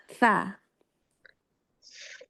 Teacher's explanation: Jadi ujung lidah bertemu dengan ujung gigi seri atas.